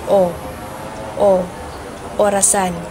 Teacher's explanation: Next ay ang punemang O. Ang punemang O ay ah nasa gitna at ang bahagi ng dila nito ay nasa likod. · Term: ponemang O